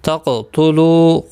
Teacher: قاف ساکن پر قلقلہ ہوگا، موٹا بھی پڑھا جائے گا، حروف مستعلیہ ہے.